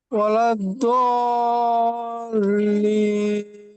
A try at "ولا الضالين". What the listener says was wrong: direct দাল এটা হবে না দত হবে ওয়ালাউ ওয়ালাউ ضالين ولا الضالين غير المغضوب عليهم غير المغضوب عليهم ولا الضالين